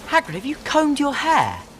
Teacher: the R is relaxed in the middle of the mouth, not touching any gum ridge nor any palate, and therefore, the R is not pronounced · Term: British R